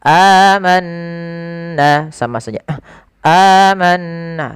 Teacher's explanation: Kalau di sini hamzah bertemu dengan atau fathah bertemu dengan alif, maka ini kita namakan dengan mad badal. Panjangnya untuk mad badal sendiri dalam riwayat Imam Hafiz an Asim adalah 2 harakat.